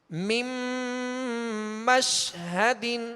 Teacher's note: اب نون جو ہے وہ میم میں داخل ہو گیا